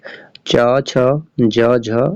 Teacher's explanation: च, छ, ज, झ, यहाँ ये सभी जो है तालव्य ध्वनियां हैं